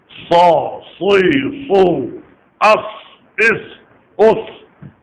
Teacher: اس میں صفیر بھی ہے, استعلا بھی ہے, اطباق بھی ہے, پر بھی ہوتا ہے, اور تیز آواز بھی سیٹی کی طرح نکلتی ہے صاد میں